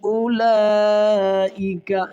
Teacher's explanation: یہاں واو نہیں پڑھیں گے، اس کو حذف کر دیں گے کیونکہ سائلنٹ ہو جائے گی، کیونکہ اس کے اوپر اور نیچے کوئی حرکت نہیں ہے، ٹھیک ہے۔